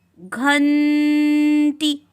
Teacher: जब हमने घंटी पढ़ा तो हमें आधे न की ध्वनि सुनाई दी, कुछ इस प्रकार, घंटी।